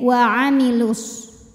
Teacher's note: Namun dibaca panjangnya hanya saat berhenti saja. Kalau wasal madnya gugur, lamnya dibaca pendek.